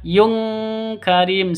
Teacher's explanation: Ghaniyyun karim tanwin bertemu dengan kaf. Cara bacanya samar didengungkan, siap-siap ke huruf kafnya. Tanwinnya ditambah dengan ng. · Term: ikhfa hakiki